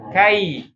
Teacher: ketika ya sukunnya jangan jadi e